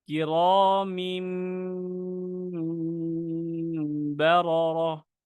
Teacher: মিম ধরার সময় আমি শুকনো অংশ থেকে ধরেছি, ছাড়ার সময় কিন্তু আমি ভিজা অংশে নিয়ে গিয়েছি, কারণ এখানে দুইটাই খুব ক্রিটিক্যাল হরফ। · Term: মিমের মাখরাজটা